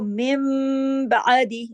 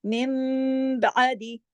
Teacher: اس کو کہتے ہیں اقلاب. نون ساکن کے بعد اگر با آ جائے تو اقلاب کا قاعدہ لگ جاتا ہے، یعنی بات پلٹ جاتی ہے نون سے میم میں، اسی لیے اس کا نام اقلاب ہے، تبدیلی ہو جاتی ہے.